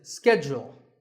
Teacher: In American English, this is schedule. The first syllable is ske and the second is jewel.